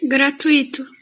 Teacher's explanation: ela é um ditongo e ela é paroxítona